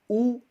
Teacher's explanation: ऊ माने हमारे होठ बाहर निकले सुराही की तरह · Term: ओष्ठ